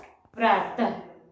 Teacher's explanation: अह का उच्चारण हम आधा ह के समान करते हैं। जैसे प्रातः, तो प्रात में अह की मात्रा लगा देंगे, जैसे ये है प्रात, तो प्रात में अह की मात्रा लगा देंगे तो ये हो जाएगा प्रातः। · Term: विसर्ग